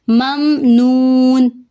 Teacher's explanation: میم ساکن کے بعد نون آ رہا ہے تو یہاں پہ ہم میم کی آواز کو ظاہر کریں گے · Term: اظہار